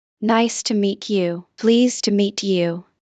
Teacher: meet you becomes meecha